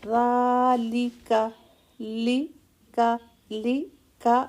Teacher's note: ذال کو کھڑا زبر ہے، لام اور کاف کو سنگل حرکت ہے، ٹچ کا ٹائم